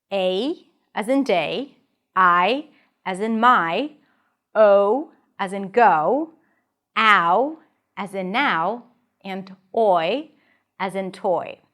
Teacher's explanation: But there are also defth thongs or dip thongs. vowels that change from one sound to another within the same syllable. There are five key def thongs in English.